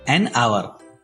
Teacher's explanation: As H is silent here, hour starts with a vowel sound. So, N is used before the word hour.